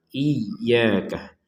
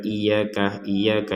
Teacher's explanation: Jadi tasydid itu artinya seakan-akan iya-nya ada 2. Ya bukan seakan-akan, tapi memang harus ditekan itu.